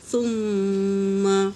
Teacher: میم پر تشدید ہو تو غنہ ہوگا